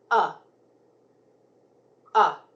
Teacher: flat and my mouth is wide open like this uh uh it's a voice sound my vocal cords vibrate